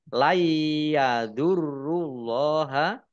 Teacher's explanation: roknya dibaca double ada tasdidnya · nun sukun bertemu dengan huruf ya. Idgham bi gunnah masuk dengan mendengung yaitu mendengung ya. Ya ditandai yaknya ada tasdidnya.